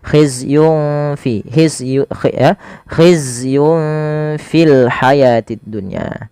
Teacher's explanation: maka samarkan langsung nunnya kepada huruf fa-nya. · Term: ikhfa